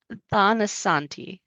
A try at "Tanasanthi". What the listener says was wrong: the T is aspirated, so it doesn't sound like a tha, it's a ta.